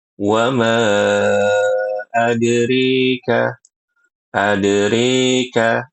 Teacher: Imalah itu dibaca e.